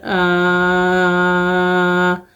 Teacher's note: کھڑی زبر کو ہم 2 حرکت کھینچ کے پڑھتے ہیں